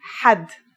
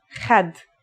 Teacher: ha is pronounced in a deeper part of the throat than kha.